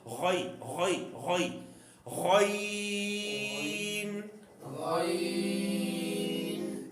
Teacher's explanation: جو غین ہے واضح طور پہ حلق کے سب سے اوپر والے حصے سے ادا کرنا ہے